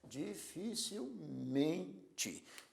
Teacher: Dificilmente é uma palavra que tem a sílaba tônica men, a sílaba forte é men